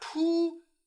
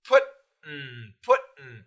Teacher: Button, putin. So we stop the T, and then we keep the tongue there for the N.